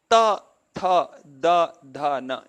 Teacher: in all of them the tongue is touching the teeth